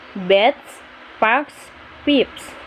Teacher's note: if the consonant presenting the s is voiceless then the s also will be pronounced as a voiceless consonant